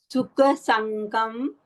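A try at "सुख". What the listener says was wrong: Sukha. It is Sukha, kha, not ka. क अभी भी अल्प प्राण आ रहा है, ख महाप्राण।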